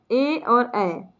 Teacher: अगला है कंठ तालु। तो ऐसे वर्ण जिनका उच्चारण स्थान कंठ तालु से हो वैसे वर्णों को कंठ तालव्य वर्ण कहते हैं।